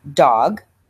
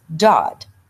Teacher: Fronting is taking a sound that should be made at the velum or at the back of the hard palate, and they move it forward and make it more towards perhaps the alveolar ridge. So dog, the g being made as a velar sound, is moved forward to the alveolar ridge, and the child says dod.